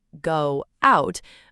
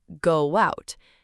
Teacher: In order to open your mouth to say out, your lips have to unroll. And when they unroll, they accidentally make a W sound. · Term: invisible W